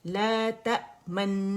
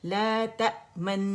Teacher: गुन्ना स्टार्ट किया, लिप्स को मैंने रोल कर दिया, और फिर गुन्ने की मिकदार तक मैंने इसे रोल रखा, फिर ख़त्म किया, फिर गुन्ना ख़त्म किया, ला तमन्ना, ठीक है।